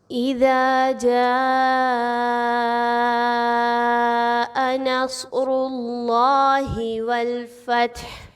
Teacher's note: اذا جاء نصر اللہ والفتح، اس میں دیکھیں تو ذال الف زبر دا، الف مدہ ہے، 1 سے 2 الف کے برابر آپ نے اس کی حرکت کو کھینچ کے لمبا کر کے پڑھنا ہے۔